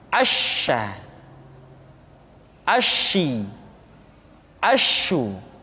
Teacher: Dan sifat yang dimiliki oleh huruf sya yang paling nampak adalah apa yang disebut dengan sifat at-tafashi, yaitu menyebarnya angin di dalam mulut kita